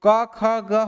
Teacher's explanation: क वर्ग जो है वो कहां से निकलेगा, कंठ से